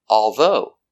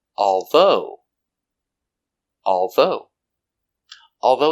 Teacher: Two syllables, although. Although. Stress on the second syllable.